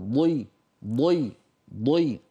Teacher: من حافتي اللسان، ضي قوية، حرف الضاد قوي جدا